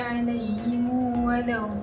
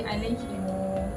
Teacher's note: mim jamak pada perkataan alaihim tu kita membariskan dengan dhammah dan dibaca dengan silah. Alaihim jadi alaihimu.